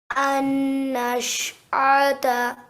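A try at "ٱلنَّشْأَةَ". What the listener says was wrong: Okay, again with the noon. Remember, the noon mushaddad needs 2 seconds for it to be a proper nasalization. Do you want to try that again?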